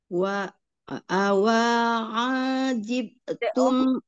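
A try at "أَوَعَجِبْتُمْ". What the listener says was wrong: awanya pendek. Awa ajibtum.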